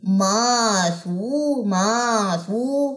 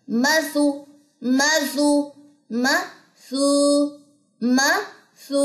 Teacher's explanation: میم لمبی نہیں کرنی، سو لمبے کرنا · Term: واو مدہ